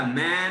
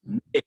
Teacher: मे बोला, मैं नहीं, नाक से उच्चारण नहीं आना इसमें।